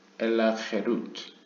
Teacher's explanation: 하루트라고 읽지 말고 아 대신에 에로 읽어라. 그래서 헤루트라고 읽어라.